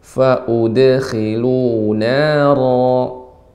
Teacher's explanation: Dal hanya dipantulkan saja.